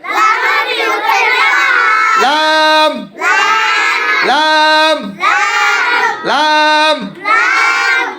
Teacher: জিব্বার আগার কিনারা সামনের উপরে দাঁতের মারির সঙ্গে লাগিয়ে জোরে লাম হরফটি উচ্চারিত হয় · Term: 8 নম্বর মাখরাজ